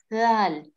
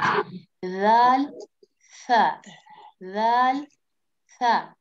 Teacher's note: Dal comes out from the top of the tongue and the inner edge of the upper teeth.